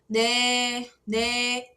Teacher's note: A diferença é que o N coreano ele puxa mais pro D.